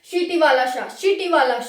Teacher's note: ये हमारे पास चार ऊष्म संघर्षी व्यंजन है। जब भी हम इनको बोलते हैं तो मुख में घर्षण होता है, जो हम बोलते हैं ना उसमें घर्षण होता है, और फिर एक गर्म हवा हमें निकली हुई फील होती है